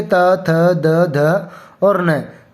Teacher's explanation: जिन व्यंजनों को बोलते समय हमारी जीभ है वो दांतों से टकराती है, तो जो तय वाली लाइन बोलेंगे त, थ, द, ध और न, तो हमारी जीभ है वो दांतों से टकराएगी।